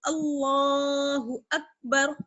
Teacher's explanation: اللہ موٹا پڑھنا ہے لام کو، اکبر اور را کو جو ہے وہ موٹا پڑھنا ہے، باقی سب کو باریک